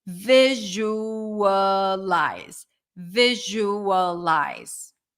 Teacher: stress is on the first syllable